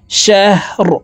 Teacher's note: রকে ওয়াকফের ক্ষেত্রে সাকিন করে ফেলবো।